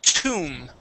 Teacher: this is going to be an oo sound, a long oo or a long u